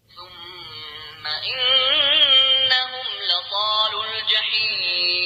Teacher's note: ثم الثاء هنا من الحروف اللثوية. الميم حرف غنة مشدد، غنة بمقدار حركتين.